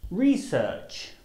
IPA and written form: rɪˈsɜːtʆ (research)